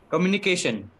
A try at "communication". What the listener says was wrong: Now here it won't be ka, it will be k. Communication.